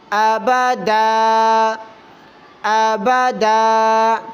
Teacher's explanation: دو زبر والی تنوین پر جب بھی ہم وقف کریں گے، وقف کی صورت میں الف پڑھنا ہے